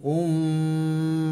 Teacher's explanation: mim bertasydid ini suaranya ditekan ditahan berdengung